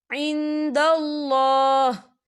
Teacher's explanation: अल्लाह का नाम जो है पुर पड़ा जाएगा, क्योंकि अल्लाह के नाम से पहले ज़बर है